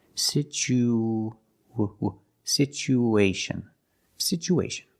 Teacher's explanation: we need to link the U with the a so we have an extra sound it's like a ww sound like a w to link these two vowels